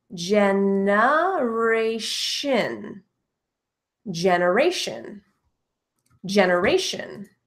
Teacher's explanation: So we hear that schwa sound there in the second E